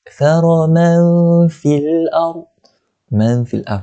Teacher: Hukumnya adalah ikhfa hakiki. Macam mana nak sebut dia? Macam mana nak baca dia? Kita kena dengung 2 harakat.